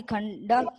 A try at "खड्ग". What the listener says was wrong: अभी यहाँ देखिए आपने भी यहाँ पे खंडा का उच्चारण किया है। हाँ खड़गा, खंडा नहीं होगा बेटा, खड़गा।